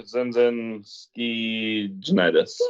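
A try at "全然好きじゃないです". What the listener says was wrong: Your intonation didn't really match what you were saying, but we'll accept it.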